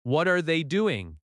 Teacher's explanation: The T connects to R. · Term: linking